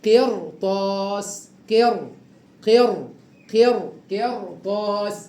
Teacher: حركه الكسر واللي بعد حرف الراء الطاء عليها حركه الفتح مفتوح والطاء من حروف التفخيم خلي بالك يبقى تفخم الراء هكذا قرطاس قر قر قر قرطاس او مرصادا مرصادا قرطاس قرطاس